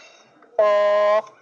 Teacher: زبان کی جڑ قوے کے قریب نرم تالو سے لگے تو قوف ادا ہوتا ہے۔ زبان کی جڑ، قوہ جو گوشت کا لوتھڑا لٹک رہا ہوتا ہے اسے قوہ بولتے ہیں، تو زبان کی جڑ قوے کے قریب نرم تالو سے لگے تو قوف ادا ہوتا ہے۔ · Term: موٹے قوف